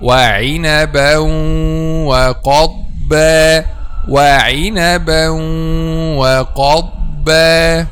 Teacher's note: Okay, some people say, or some students, وَعِنَبًا وَقَضْبًا وَقَضْبًا, and this is wrong because ad-dad is not of the bouncing letter